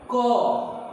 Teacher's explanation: जब आप क बोलेंगे तो क बोल के देखिए अंत में जो है अ का उच्चारण होता है। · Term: व्यंजन वर्ण